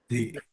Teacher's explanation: Zai ini keluarnya dari ujung lidah menempel ke gigi seri yang bawah, ya. Zi. Nah, kemudian ayah bunda di sini ada sifat desis, sofir. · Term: huruf zai